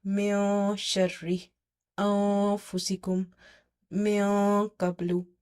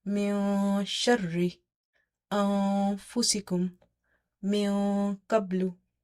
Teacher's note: This is a partial nasal sound, but the mouth is not sealed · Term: ikhfa